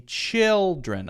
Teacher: chill is the stressed syllable, not dren.